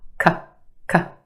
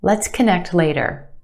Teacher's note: First syllable becomes the schwa. K, k. Very quick, unemphasized, schwa sound.